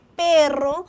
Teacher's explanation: Ya estamos hablando de la R en el sonido fuerte, la vibrante, por ejemplo, en perro.